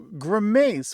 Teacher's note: So grimace with the stress on the second syllable.